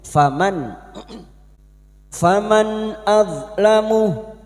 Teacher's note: mim yang bertasdid gunna musaddada kita dengungkan selama 3 harokat